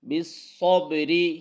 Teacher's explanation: صاد یہاں موٹا پڑھنا ہے، را کو باریک پڑھنا ہے کیونکہ را کے نیچے زیر ہے۔ واستعینوا بالصبر، صوب صاد اور با کے ساتھ ملانا ہے اور با پر کلکلا آواز کو ہلانا ہے.